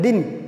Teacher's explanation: दी कहते ही न बोल रहे हैं, न बोलने में टाइम लग ही नहीं रहा, दी बोलते ही न, दिन, दीन, दिन। तो दिन, दी बोलते ही न बोल रहे हैं, टाइम नहीं लग रहा, तो इसको मात्रा छोटी बोलेंगे।